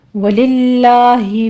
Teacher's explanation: وَلِلَّهِ میں لفظ جلالہ باریک پڑھا جائے گا